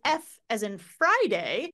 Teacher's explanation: if you say f as in Friday you shouldn't feel any vibration